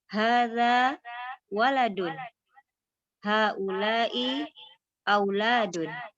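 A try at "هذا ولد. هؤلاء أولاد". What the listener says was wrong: Enak, ahsanti.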